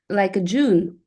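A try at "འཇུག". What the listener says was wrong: Almost, yeah, Jung. Like, and you pronounce the G.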